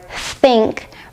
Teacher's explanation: your tongue should be a little tense and you should blow out air without using your vocal cords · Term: unvoiced th sound